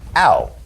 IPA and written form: aʊ (Ow)